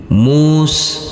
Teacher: huruf Sin tidak boleh dipantulkan karena ini bukan bacaan Qalqalah